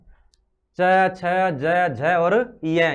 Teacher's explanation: तालू से उच्चारित करते हैं इन पांचों को